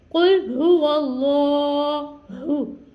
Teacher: वल्लाहु, अल्लाह अज़्ज़ व जल के लाम से पहले हर पर ज़बर है तो इस लाम को हमने पुर यानी मोटा अदा करना है और लाम को हमने खींच के अदा करना है। कुल हुवल्लाहु, फिर हा की अदायगी करनी है अहद।